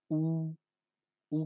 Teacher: या मुख का क्या है गोलाकार एकदम गोलाकार ओठ जो है ऊपर का ओठ ठीक है और नीचे का ओठ एकदम गोलाकार हो जाएगा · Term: वृत मुखी, व्रतमुखी